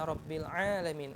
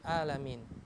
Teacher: A-nya ini kita ucapkan dengan ain, A, dengan benar